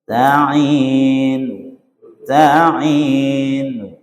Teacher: Membaca tetap dengan harakat dommah tapi suaranya pelan. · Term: arraum